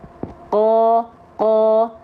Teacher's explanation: Q berharakat fathah ya oke itu bunyi vokal a-nya jadi O karena pangkal lidahnya diangkat nama sifatnya istila bibirnya enggak perlu monyong